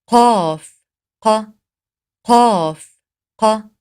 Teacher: زبان کی جڑ جب کوے کے قریب نرم تالو سے جا کے لگتی ہے تو قاف کی ادائیگی ہوتی ہے، جیسا کہ قاف ق قاف ق۔